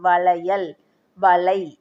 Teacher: மொழிக்கு இடையிலையும் இறுதியிலையும் வரும்போது 1 மாத்திரை அளவில் தான் ஒலிக்கும். இப்போ வளையல், வளை, ஐ வருதா, இந்த இடத்துல 1 மாத்திரையா நம்ம சொல்லணும். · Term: ஐகார குறுக்கம்